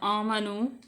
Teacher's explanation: واو ساکن سے پہلے نون کے اوپر پیش ہے تو واو مدہ ہو جائے گی، اس کو لمبا کریں گے